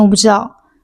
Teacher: 这个知也会是清音